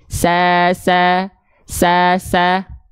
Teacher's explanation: Ketika fathah bunyi vokalnya A karena dia tipis. Kenapa? Karena pangkal lidahnya gak naik, aula mulutnya terbuka. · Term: huruf tipis